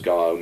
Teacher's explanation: dropped h again in the phrase go home